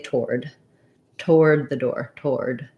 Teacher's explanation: um the w is kind of a little bit there because if i have a schwa here and i'm going from the uh to the o that glide that gliding w sound comes in